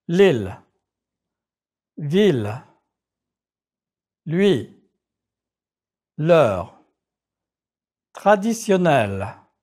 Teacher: In French, make the L sound tighter by touching the back of your front teeth and letting go quickly.